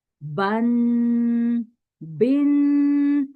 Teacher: आवाज को नाक में लेके जाना है और 2 सेकंड तक आवाज को नाक के अंदर रोकना है, घुमाना है